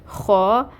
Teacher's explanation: خو حروف مستعلیہ میں سے ہے، اس کو مفخم ادا کریں گے، یعنی پر پڑھا جائے گا، یہ موٹا کر کے ادا کریں گے، اور اس کے اوپر فتحہ کی حرکت ہے، زبر کی حرکت جس کو 1 کاؤنٹ پڑھا جائے گا، لمبا نہیں کریں گے۔